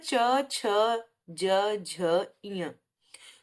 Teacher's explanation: च, ज और ञ इनका जब उच्चारण करेंगे तो प्राण वायु कम निकलेगी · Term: अल्पप्राण